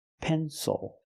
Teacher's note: the stresses on the first syllable it is not pronounced ill it is pronounced o